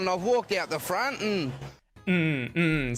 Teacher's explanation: he's using the syllabic N instead of saying and